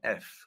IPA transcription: f